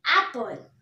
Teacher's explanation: ए पर बहुत ज्यादा स्ट्रेस लग रहा है, ए पर बहुत ज्यादा स्ट्रेस लग रहा है एप्पल, तो ये आपको स्ट्रेस सिलेबल हो गया।